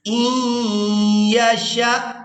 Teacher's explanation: شین کو حمزہ ساکن کے ساتھ ملائیں گے تو جھٹکے کے ساتھ ادا کریں گے